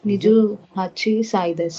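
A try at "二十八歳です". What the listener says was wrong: ಇಲ್ಲ, ಹಚ್ಚಿ ಅಂತ ಆಗಲ್ಲ. ಹಚ್ಚಿ ಪ್ಲಸ್ ಸಾಯಿ ಇದ್ದಿದ್ದು ಹಸ್ಸಾಯಿ ಆಗುತ್ತೆ. ನಿಜು ಹಸ್ಸಾಯಿ.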